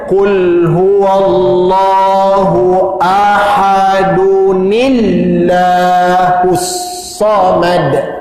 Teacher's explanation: Jadi ni tekan kat lafzul jalalah bunyinya nillah bunyinya. Ni bila tekan kepada lam lafzul jalalah bunyinya nillah.